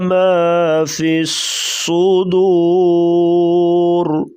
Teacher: صوت اور را کو پر پڑھیں گے، را وقفاً موٹی پڑھی جائے گی